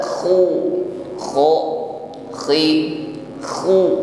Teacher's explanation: Ada gesekan di akar lidah dengan dinding tenggorokan sehingga ada bunyi dengkut lembut ketika mengucapkan huruf Dal pertemukan ujung